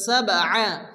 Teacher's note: বা সাকিন কলকার অক্ষর হালকা ধাক্কা দিয়ে পড়তে হবে